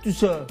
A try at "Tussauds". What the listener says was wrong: Faz mais biquinho. Essa é melhor falar assim, Tussauds.